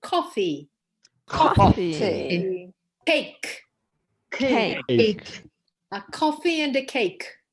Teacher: so there is a lot of, you know, this breathing. It's called aspiration